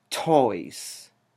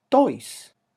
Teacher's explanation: Spanish T is not aspirated. And the place of articulation is actually very different. Instead of the alveolar, it is dental. So it is pronounced in the teeth, not in the alveolar region.